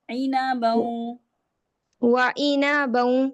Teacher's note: وعنبا وقضبا عینا نہیں کرنا، نون زبر نا کو لمبا نہیں کرنا